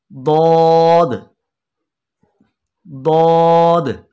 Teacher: ज़बान की करवट यानी ज़बान की एक तरफ और ऊपर वाली दाढ़ों की जड़ से ये अदा होगा